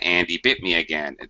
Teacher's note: that first H is totally dropped and it sounds they sound identical